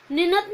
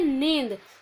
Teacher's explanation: वो इसलिए पढ़ते हैं क्योंकि ये अनुनासिक है, अनुस्वार नहीं है। बोलने में ये अनुनासिक है, किंतु इसकी जो लिखावट है उसमें हम अनुस्वार लगाते हैं।